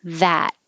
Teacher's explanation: You don't have to say the final T.